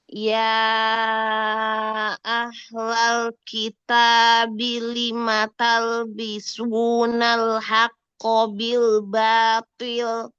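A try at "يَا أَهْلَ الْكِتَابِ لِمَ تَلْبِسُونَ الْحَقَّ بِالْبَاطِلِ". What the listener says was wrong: Haqqo, lebih jahar lagi, jangan ada hamas. Ya ahlal kitabi, haknya ahla alirkan. Talbi, lebarkan lam. Lima talbisu, lebar lagi lam. Yang lain lamnya kurang lebar. Ya ahlal kitabi lima talbisunal haqqo bil batil.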